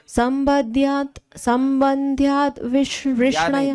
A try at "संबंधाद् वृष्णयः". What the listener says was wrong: या नहीं है, धा है। संबंधाद् वृष्णयः स्नेहात् यूयं भक्त्या वयं विभो।